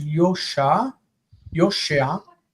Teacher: the vowel becomes e. Okay. And the stress goes backwards.